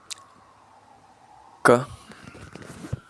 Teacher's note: It is pronounced by lifting the back of the tongue to make contact with the soft palate, that is the velum, completely obstructing airflow to build pressure and then releasing it in a voice burst of air while the vocal cords vibrate.